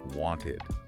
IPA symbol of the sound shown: ɪd